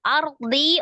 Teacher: ro, sukun sebelumnya fathah. Ro-nya dibaca tebal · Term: Tafdim